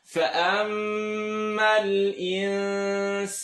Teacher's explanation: Mim shadda, full nasal sound. Nun sukun followed by sin. Tongue not touched. Stretch for 2.